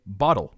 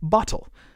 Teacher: about the word bottle if you live in America like me you probably actually say bottle with a duh sound instead of bottle